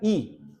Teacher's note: आ और उ, आ उ कहां होते हैं, पीछे, पश्च स्वर है ये। ई क्या है, ई मुंह के ठीक आगे, दांतों के ठीक पीछे उत्पन्न होता है, मुंह के अगले वाले भाग में